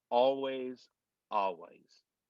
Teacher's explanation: now we'll go to the l it's it's almost non-existent